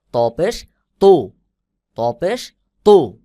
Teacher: ত একটু শক্ত করে আওয়াজ মোটা করে উচ্চারণ হবে , যেমন ত পেশ তু, ত পেশ তু, সা পেশ সু,